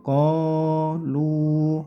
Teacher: qnya panjangkan dua harakat lya juga panjangkan dua harakat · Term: Mad Thobi'i